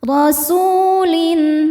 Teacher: rasulin su hukumnya mad thobii zohiri karena ada wau sukun sebelumnya baris dommah. Cara bacanya panjang dua harakat. Rasulin lin ada izhar halqi karena ada tanwin kasrah menghadapi huruf halqi atau tenggorokan yaitu hamzah. · Su hukumnya mad tabi'i dhahiri karena ada waw sukun sebelumnya baris dhammah. Cara bacanya panjang 2 harokat.